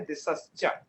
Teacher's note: वहां पर जो विसर्ग बदला है आपका, वो तालव्य शकार के रूप में बदल गया है